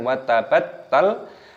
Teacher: Taknya berharokat tasdid, maka dimatikan ditekan wa tabattal.